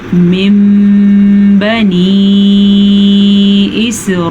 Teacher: نون ساکن کے بعد یا تنوین کے بعد حرف با آ جائے تو نون ساکن کو میم میں بدل دیتے ہیں. اب آگئی بات کہ اس کو پڑھا کیسے جائے. اسے غنّے کے ساتھ پڑھا جاتا ہے. اس کو پڑھتے ہوئے دونوں ہونٹ بند ہو جاتے ہیں. ہم اسے پڑھیں گے من بنی اسرائیل.